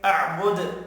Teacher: وف کی صورت میں دال ساکن پڑھا جائے گا، دال ساکن پر قلقلہ بھی کرتے ہیں۔